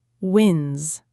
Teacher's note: The L sound is soft, almost silent-ish, like small. And wins, make sure the S at the end is a clear Z sound.